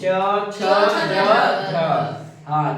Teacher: वही चाहता है कि स्पर्श का समय अधिक रहता है और अंतिम ध्वनि संघर्ष हो जाता है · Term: स्पर्श संघर्ष व्यंजन